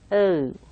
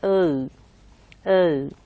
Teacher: So it's a diphthong in English. So there's a glide from O, O. So you can listen to two kinds of sounds over there when I pronounce O.